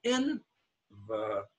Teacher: Now the second E has no stress. It's an unstressed word, envelope. And because of that, it becomes schwa.